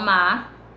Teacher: essa consoante travadora, esse R no final das palavras, geralmente eles não são pronunciados